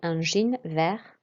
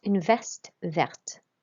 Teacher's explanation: So we'd say un jean vert to say green jeans, but une veste verte. And you'll notice that we pronounce the T when it has an E at the end as well